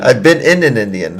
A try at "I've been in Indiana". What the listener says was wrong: I've been in Indiana. That's a one vowel more.